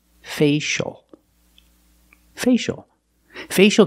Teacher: the first vowel is the long a a like say and pay